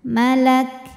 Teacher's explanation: kafnya bunyi ka, belakangnya ada anginnya, jadi bunyi hams, bunyi angin, aliran anginnya terakhir untuk kaf yang sukun.